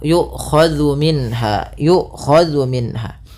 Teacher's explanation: dzu hati-hati jangan sampai dibaca dengan zai gitu ya, tapi dia zal